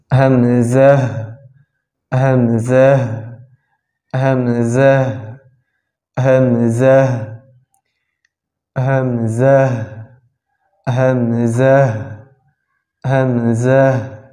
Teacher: মাকরাজ হচ্ছে হলকের শুরু হইতে